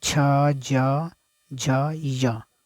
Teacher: मुख का जो ऊपर वाला जो भाग है, तो तालु, ठीक है, उसमें सट रहा है आपका जीभ